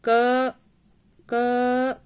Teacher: क को आप थोड़ी देर तक, जैसे थोड़ा सा लंबा क ऐसे बोलोगे तो क के बाद अ की ध्वनि आ रही है ना, तो इसमें स्वर मिला हुआ है।